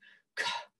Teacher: This CH is not ch. It's more like a little breath after the K sound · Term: aspiration